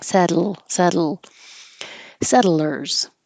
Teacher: kind of using a syllabic l when you say settlers settle when your tongue goes up to the T position set then you kind of hold the tip in the L position and that let the air come out the sides of the